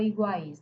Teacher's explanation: É, o U é semivogal. O A é a única vogal pura, porque no português forma sílaba com vogal e o I é semivogal.